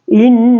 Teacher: Di sini terjadi karena ada huruf dan tasydid ketika membaca harus didengunkan antara 2 sampai 3 harakat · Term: gunnah